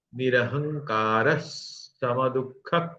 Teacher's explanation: यह जो विसर्ग है व उसका ऐसा आएगा दंत स क्योंकि उसके बाद में स है इसलिए उसका उच्चारण स ही होगा निरह कास सम दुख यहां